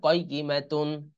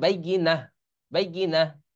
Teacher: আচ্ছা, কয়িমাতুন এটা যদি আমরা না থামি তাহলে কয়িমাতুন হবে। আর যদি শেষে থেমে যাই, হ্যাঁ, তাহলে এই তাটা হা হয়ে যায়।